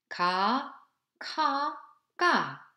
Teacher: They are produced in soft palate, but the way of articulation are different. In other words, ka is plain sound, ka, aspirate sound, ka, ga, tense sound.